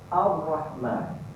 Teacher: Jadi automatik dia masuk. Alif lam tak bunyi, alif tu masuk ke dalam huruf ra. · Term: alif lam samsiah